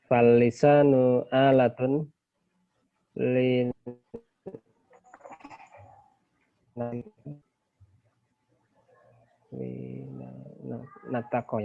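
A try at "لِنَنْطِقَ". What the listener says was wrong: Lin nutaki ya seperti itu ya. Nutek ya. Bukan nuntek ya. Lin nutaki ya. Jadi maksud daripada natoko yantiku itu nutek.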